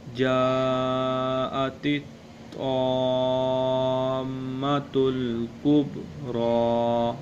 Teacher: را کو ہم پر کریں گے، ادھر ہم وقف بھی کریں گے تو پھر بھی کبریٰ پڑھا جائے گا